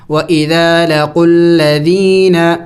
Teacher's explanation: یا ساکن سے پہلے جب زیر آ جائے تو اسے یا مدہ کہتے ہیں، اور اس کو بھی ایک الف کے مقدار لمبا کرنا ہوتا ہے، کھینچنا ہوتا ہے.